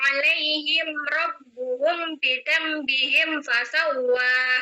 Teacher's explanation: terjadi idgham kabir antara mim sukun hum dan ba bi dengan menggabungkan idgham huruf mim ke ba